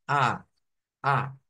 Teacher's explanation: la e e la boca se abre un poco más y la a es la más abierta